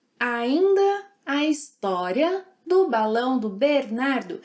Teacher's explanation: It's interesting to notice the intonation he uses. He emphasizes all the stressed syllables.